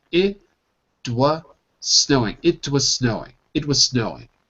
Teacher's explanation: the T becomes a d and it transfers over to the was · we drop the Z and we go right to the S and snowing